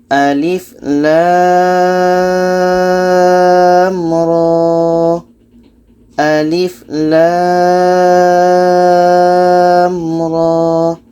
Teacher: lem ini kita panjangkan 6 harkat roh ini dua harkat saja